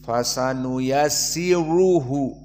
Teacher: maka ra di sini mufakhamah, dibaca tebal